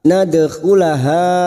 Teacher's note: dal sukun qalqalah sugro yang mati asli di tengah kalimat jangan lupa dipantulkan